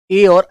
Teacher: कंठ प्लस तालु के मेल से मेरे बच्चों ए और ऐ की आवाज निकलती है